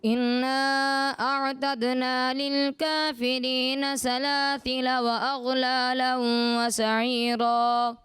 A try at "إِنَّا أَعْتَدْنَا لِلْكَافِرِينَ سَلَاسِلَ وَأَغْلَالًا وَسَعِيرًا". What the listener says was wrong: ان کے نون مشدد ہے، یہاں بیٹا غنہ کیا جاتا ہے، اس پر مزید توجہ رکھیے گا.